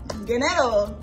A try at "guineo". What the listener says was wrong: Guineo. You said money now. It's not dinero. It's guineo. Guineo.